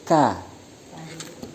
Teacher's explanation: bertempat pada pangkal lidah agak ke depan mengenai langit-langit atas keras